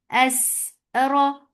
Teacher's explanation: Ra is heavy. Whenever ra is with fatha, it is heavy.